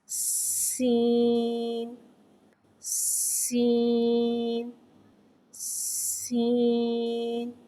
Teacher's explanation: سین کو ایک الف یعنی 3 حرکات کے برابر کھینچ کے پڑھیں گے۔ سین حرف سفریہ ہے، زبان کی نوک اور دونوں دانتوں کے اندرونی کنارے سے ادا ہوتا ہے۔ سین میں سیٹی کو ظاہر کریں گے۔